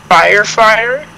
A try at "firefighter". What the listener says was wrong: No, you said fig. Fig fighter.